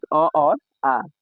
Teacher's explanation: कंठ से अ, आ के उच्चारण हम लोग करते हैं।